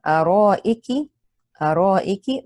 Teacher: So it's one word, therefore this mud letter here being present in one word with the cause for its increase in mud, which is the hamza. This type of mud is referred to as mud wajib muttasil, the required connected mud. And we elongate it for 4 or 5 counts.